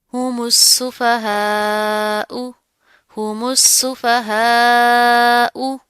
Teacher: यहाँ पर भी मीम को सीन के साथ मिलाकर पढ़ेंगे और फिर यहाँ पर मद करेंगे और इस हमजा के ऊपर पेश है, बगैर खींचे जल्दी से अदा कर देंगे